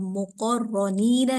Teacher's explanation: अब मुक़र्रनीना के अंदर अगर आप देखें कि रॉ पे ज़बर भी आ रहा है और मुशद्दद भी है तो यहाँ रॉ को पुर मुखफ़म पढ़ा जा रहा है